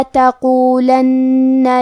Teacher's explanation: آخری میں نون پہ تشدید ہے تو ہمیں 2 حرف کے برابر نون کو پڑھنا ہے۔